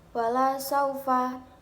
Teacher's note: terdapat bacaan Mad layyin karena ada tanda baca fathah bertemu dengan huruf ya mati cara membacanya sekedar lunak dan lemas